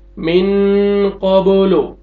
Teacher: बा देखें हरूफ क़लक़ला में से है, यहाँ पे डबल साउंड लेके जाएंगे